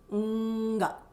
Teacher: The ng is the full nasal. Ng. So it's stopped and released. And you almost hear a G sound in that.